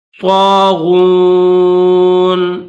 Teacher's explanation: یہ جو طا ہے بغیر نقطوں والی اس کو بھی موٹا پڑھیں گے، اور یہ غین ہے اس کو بھی موٹا کر کے پڑھیں گے